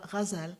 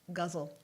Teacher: It's really not a G, but it is. You have to soften it a little bit, almost like you're saying a J.